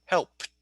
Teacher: after unvoiced sounds such as p, k, f, s, sh, and ch, the final ed is pronounced like the letter T in cat